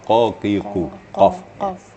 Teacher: Kaf agak di depan, tapi qaf belakang. Qaf. Ada getaran di pangkal lidah. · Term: huruf qaf